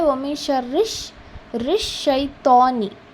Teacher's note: را جا کر شین سے آپ کو مل رہا ہے کیونکہ شین کے اوپر تشدید ہے